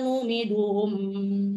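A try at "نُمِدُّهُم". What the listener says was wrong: Ada tasdid, Bu? Numidduhum, ada tasdid ya.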